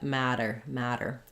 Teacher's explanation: a flap is basically voiced. We raise our tongue up to the T and D spot, but we don't build up a lot of pressure.